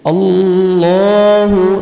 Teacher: اللہ پر ہو رہا ہے لام اور موٹا بھی پڑھا جا رہا ہے اور 1 سیکنڈ کھینچ رہے ہیں۔ اللہ تا کو باریک پڑھیں گے، ہا کو اپنی صحیح مخرج سے ادا کریں گے۔